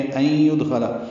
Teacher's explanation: نون ساکن کے بعد یا آنے کی وجہ سے ادغام ہوا ہے، ادغام ناقص ہے، غنہ ہوگا